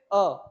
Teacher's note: जैसे ही अ का उच्चारण होता है करते हैं तो ऐसा महसूस होता है कि जीवा का जो मध्य का भाग है वह यकायक से हल्का सा ऊपर की ओर उठता है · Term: मध्य स्वर